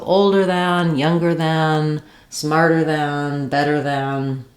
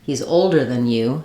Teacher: It's more of older than, almost no vowel, very reduced